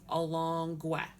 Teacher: so the stress is on the second to last syllable